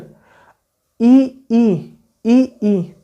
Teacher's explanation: तालव्य, जीभ से बोलता है आगे से